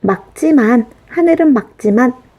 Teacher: 자, 말지만이 아니고 뒤에 기역이 오지 않고 지읒으로 왔기 때문에 자, 우리 원칙적으로 리을 기역 중에서 기역으로 발음해야 하죠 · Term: 겹받침